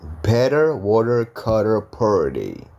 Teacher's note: RT vokal ya itu T-nya diganti juga jadi D, tipis ya. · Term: Flap T